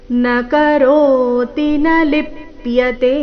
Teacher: ನಕರೋತಿ ಈ ರೀತಿ ತಿನ ದೀರ್ಘ ಮಾಡಬಾರದು ರಸ್ವ ದೀರ್ಘಗಳ ಮೇಲೆ ಗಮನ ಕೊಡಬೇಕು ನಕರೋತಿ ರೋ ದೀರ್ಘ ನ ಲಿಪ್ಯತೆ ಕೊನೆಯತೆ ದೀರ್ಘ